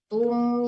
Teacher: tumnya itu enggak boleh dengung, enggak boleh ditahan lama